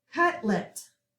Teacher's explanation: Cutlet, box in your LET suffix. We have a short U sound, and we have a K back sound. We're going to accent the first syllable.